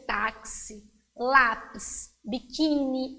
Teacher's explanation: exemplo terminada em i ou is pode ser táxi lápis biquíni então são palavras que a sílaba forte é a penúltima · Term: paroxítonas